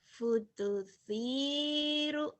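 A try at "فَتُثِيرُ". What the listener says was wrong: putus salah. Salah bukan putu. Fatusiru, fatusiru.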